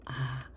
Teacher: 혀의 높이가 낮다는 건 뭐를 의미하냐? 입을 가장 크게 벌린다는 뜻이에요. 입을 가장 크게 벌렸을 때 혀의 높이가 낮아지겠죠.